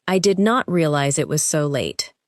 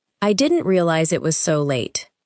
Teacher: Notice how did not contracts, and how the unstressed words become lighter. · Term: natural version